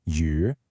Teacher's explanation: You know the sound is U, and you know the tone is a falling and then rising pitch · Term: third tone